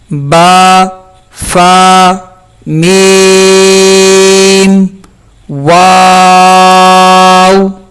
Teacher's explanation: ان 4 حروف کو ہم حروف شفویہ کہتے ہیں، اور وہ یہ ہیں: با، فا، میم، واو۔ یعنی کہ ان 4 حروف کو ادا کرنے میں ہونٹوں کا استعمال ہوتا ہے، ہونٹ حرکت کرتے ہیں